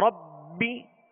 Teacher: اب با کے نیچے صرف زیر ہے تو بغیر کھینچے بغیر جھٹکا دیے معروف پڑھیں گے